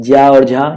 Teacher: ज्या और झा ये तालव्य होता है।